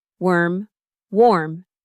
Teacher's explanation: See how warm has more lip rounding? That's the physical clue.